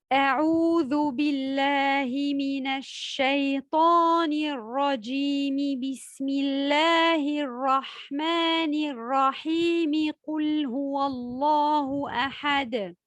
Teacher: C'est le fait de tout lier sans faire de pause entre al-isti'adha, la basmala et le début d'une sourate. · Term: wasl al-jami'